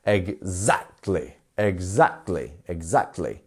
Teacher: where is our stress syllable exactly it's in our second syllable isn't it